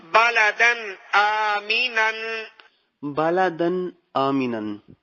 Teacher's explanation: کیونکہ حرف ہلکی حمزہ ہے نا۔ تو بالادن آمینن میں یہاں پہ غنہ نہیں کیا جا رہا اس وجہ سے کیونکہ یہاں پہ اظہار کا قاعدہ ہوگا، تنوین کے بعد حرف ہلکی آ گیا۔